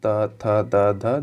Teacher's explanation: इसका उच्चारण अगर देखा जाए तो ये दांत के स्पर्श से ये होता है। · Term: दंत्व व्यंजन